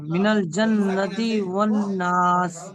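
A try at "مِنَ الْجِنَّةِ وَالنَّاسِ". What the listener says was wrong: জান্নাতি নয়, জিন্নাতি, জিমের নিচে জের আছে, জিন্নাতি।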